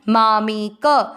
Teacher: मा में दोनों अक्षर दीर्घ है दोनों को लंबा खींचना है